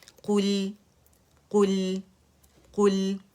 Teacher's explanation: ہم نے قلقلہ لام میں نہیں کرنا، ایک کاؤنٹ کے لیے مخرج پہ ٹک جانا ہے